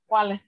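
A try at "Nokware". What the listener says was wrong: Anokwal, anokwal. Anokwal. There's no I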